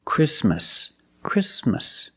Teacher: The T is between consonants, so it is silent. Link the sound s with the m.